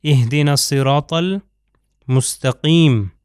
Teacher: یہاں پر آپ دیکھ سکتے ہیں حرف صاد جو ہے، صاد کو سین کی طرح تلفظ نہیں کرنا، صاد جو ہے موٹا ہے، تھک لیٹرز میں سے ہے